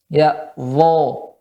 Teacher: Namun ya pada dha pangkal lidah kita naikkan ya, dan suara ya ditebalkan.